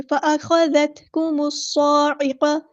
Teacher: صاد پہ کھڑا زبر ہے تو مد اصلی کریں گے، صاد کو لمبا کریں گے، الف کے برابر · ساتھ ملا دینا ہے، حمزۃ الوصل ہمارا ڈراپ ہو جائے گا، لام یہاں پہ ہمارا لام شمسیہ ہے تو ہم اس کو ظاہر نہیں کریں گے